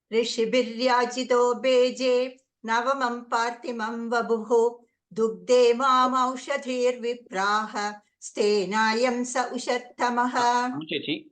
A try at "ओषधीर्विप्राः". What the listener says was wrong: ओषधीर्, not औषधीर्, ओषधीर्विप्राः.